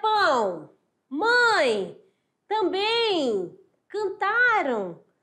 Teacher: A saída de ar é pela boca e pelo nariz. · Então, é um som nasal, que o ar quer sair também pelo nariz.